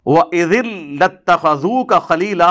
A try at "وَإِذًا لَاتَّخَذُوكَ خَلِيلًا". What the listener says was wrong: نہیں پتر نہیں، اِذٍ لَاتَّخَذُوكَ خَلِيلًا نہیں ہے، اِذًا لَاتَّخَذُوكَ، اِذًا ہے بیٹے، اِذًا، اذ نہیں ہے، اذ نہیں، اِذًا ہے، اِذًا لَاتَّخَذُوكَ خَلِيلًا۔